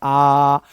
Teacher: विवृत्त स्वर में मुंह पूरा खुल रहा है। जितना मैक्सिमम खुल सकता है